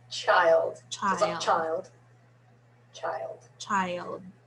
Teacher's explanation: really two syllables there because we just put a y and a schwa in there